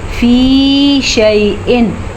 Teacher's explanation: यहाँ पे हमने तनवीन के साथ कुछ भी नहीं किया क्योंकि तनवीन के बाद हुरूफ़ हल्की में से हमज़ा आया हुआ है, तो तनवीन को हम ज़ाहिर करके बग़ैर गुन्ने के पढ़ेंगे